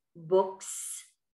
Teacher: لما بتنتهي الكلمة بصوت الكا زي كلمة books. لاحظوا الصوت طلع معانا سا.